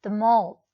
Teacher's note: I can make a rising intonation.